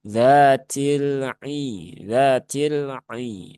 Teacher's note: Lam sukun sifatnya bukan syiddah. Maka jangan dzatil, tapi cukup ditawasutkan saja ya. Dialirkan sedikit jangan ditekan ya, jangan mengalir banyak-banyak.